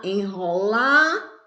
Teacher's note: O lá é a sílaba mais forte, é a sílaba que nós pronunciamos com mais força